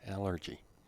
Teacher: Stress is on the first one, allergy.